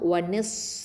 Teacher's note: ஹம்ஸுங்கிற சிஃபத்தை கொடுக்கணும், காற்று வெளியில் தள்ளணும்.